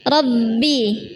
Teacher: Bibirnya enggak perlu dimasukkan ke dalam, bukan Rob, tapi Robbi. Dan agak bergetar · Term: ba tipis-tipis